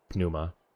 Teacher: there's no puff of air from French P so it's really soft